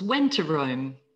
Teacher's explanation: It becomes went to Rome. Just one T sound.